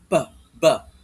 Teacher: The P and B sounds are both characterized in the manner of articulation whereby you place your two lips together. Magkadikit yung dalawang labi mo and then, yun nga, sabi ko nga, manner of articulation, may sudden release. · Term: bilabial